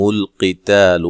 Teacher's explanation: قاف کو موٹا، تا کو باریک